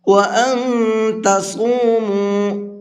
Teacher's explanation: صاد کو یہاں بھی منہ بھر کے پڑھیں گے